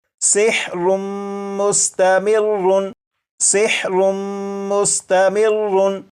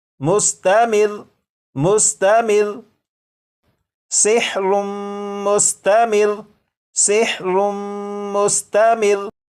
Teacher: लेकिन जब वक्फ में पढ़ेंगे तो ये जो लफ्ज़ है इस लफ्ज़ के रा के ऊपर जो तशदीद है इसे तो पढ़ेंगे, लेकिन रा के ऊपर जो 2 पेश हैं इन्हें ख़त्म कर देंगे। और ये जो लफ्ज़ है मुस्तमिर्रुन, वक्फ में ये पढ़ा जाएगा मुस्तमिर मुस्तमिर सिहरुम मुस्तमिर सिहरुम मुस्तमिर।